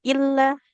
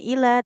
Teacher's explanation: Kemudian tanda tasdid ya illa bukan ila tapi illallah